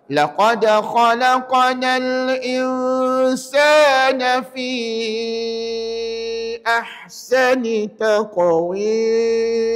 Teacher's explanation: Dekat fi tuan puan tahu tak kena baca lebih daripada dua harakat. Maksudnya kena baca 4 L. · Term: empat harakat